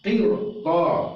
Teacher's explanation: Walaupun dia baris sebelum roh yang mati ini adalah baris di bawah, maka dia harus dibaca tebal. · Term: roh yang tebal